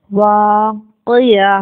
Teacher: وقف کی صورت میں ہم اس کو ہا ساکن سے بدل کر پڑھیں گے